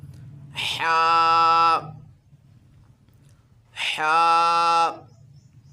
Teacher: جیم جیم جیم، آگے حرف ہے جی ہا، ہا کو پڑھتے وقت حلق سے اسے ادا کرنا ہے اور سانس نکال کے اسے پڑھنا ہے۔